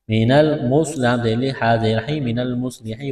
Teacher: نون کو لام کے ساتھ ملانا ہے ، نون لام زبر نل میم صاد پیش مس، من المس